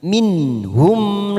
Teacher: Nun sukun bertemu huruf ha kita baca jelas tanpa mendengung, namanya idhar halki.